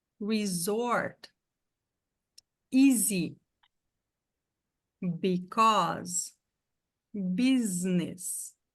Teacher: Então, nessas palavras aqui, o S ou dois S's que está sublinhado tem som de Z.